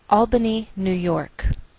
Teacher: Albany, New York. Note that we treat New York as one word and we place more stress on the second part, York